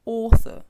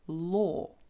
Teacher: рухаємося далі з нашою табличкою беремо нові буквосполучення auu і aw ці обидва букво сполучення дають звук О такий довгий гарний звук о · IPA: ɔ: